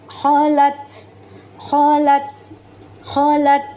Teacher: Cara melafalkannya, huruf ta ini jangan bunyi berdesis, kholat. Ya, karena huruf ta ini tidak mempunyai desis.